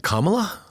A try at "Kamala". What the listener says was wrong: The emphasis is on the ka, the first syllable, Kamala.